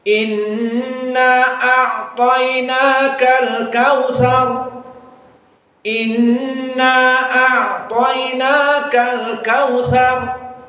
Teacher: Berarti antara gunnah nun dengan na 2 harokat, dan juga naka 2 harokat sama. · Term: qasril mad